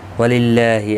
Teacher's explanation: اللہ کا لام باریک پڑھا جائے گا اس زیر کی وجہ سے، اس کے اوپر کھڑی زبر بھی ہے، ایک الف کی مقدار کے برابر کھینچ کر بھی پڑھا جائے گا۔